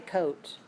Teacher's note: you can always see how much I round my lips when I say coat